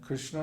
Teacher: in Krishna both syllables are short because there's no long vowels the r in is short and the a Inna is short